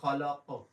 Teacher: اس کے بعد بسم ربک، را پر پڑھیں گے، ربک الذی خلق، اور یہ قاف پھر قلقلے والا ہے، اس میں آواز کو بھاری کر کے گلے سے نکالیں گے